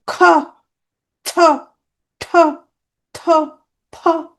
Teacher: শক্তি বেশি লাগে তাহলে এখানে বাতাস বেশি লাগে চাপ বেশি আধিক্য থাকে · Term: মহাপ্রাণ